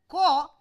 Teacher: If I say Ka is unvoiced, unaspirated. During the production of the Ka, the back of the tongue touches the velar position, but vocal cord is open. So, there is no voicing during the occlusion, that is why it is called unvoiced plosive, unvoiced velar, unvoiced. · So, there is no voicing during the occlusion, that is why it is called unvoiced plosive, unvoiced velar, unvoiced. Since VOT does not carry any aspiration, then it is called unaspirated sound. So, unvoiced, unaspirated, velar, plosive.